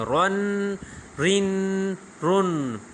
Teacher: تو اس میں را میں وائبریشن ہوگی، نون میں یعنی زبان برقرار رہے گی، لام میں بھی زبان برقرار رہے گی، لیکن جگہ ایک ہی ہے، لیکن الفاظ میں یعنی پڑھنے میں مختلف ہے، اس لیے اکٹھا ہے ادھر۔